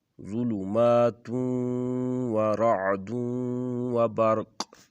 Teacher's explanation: تا کے بعد جو واو آ رہا ہے یہاں پر بھی ادغام ہے، اور دال کے بعد جو واو آ رہا ہے یہاں پر بھی ادغام ہوگا